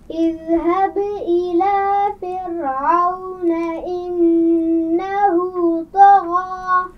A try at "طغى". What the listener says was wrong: طغى طا کو موٹا پڑھیے.